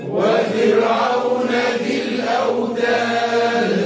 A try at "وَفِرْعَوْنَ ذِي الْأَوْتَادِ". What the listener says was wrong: رق الراء، وفرعون ذي الأوتاد،